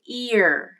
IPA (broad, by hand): ɪɹ